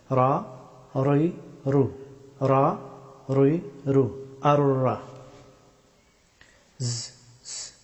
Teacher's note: রা হরফটি উচ্চারিত হয় জিহ্বার সামনের অংশের পিঠ এবং সোজা উপরের তালুর শক্ত অংশ চুইয়ে